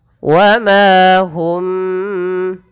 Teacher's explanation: ada bacaan kita namakan dengan ikhfa syafawi. Mimnya ditahan. Wa ma hum, 2 harokat.